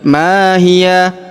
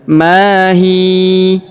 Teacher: Jadi bukan ma hiya tapi mahi. Huruf ya di ujung kita sukunkan ya atau kita matikan